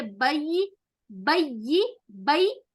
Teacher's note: یا تشدید کے ساتھ یا کو 2 مرتبہ سختی کے ساتھ ادا کریں گے, با کے ساتھ ملائیں گے. بئی, بئی, بئی ایک بار, ای یا کے نیچے زیر دیں گے 2 بار.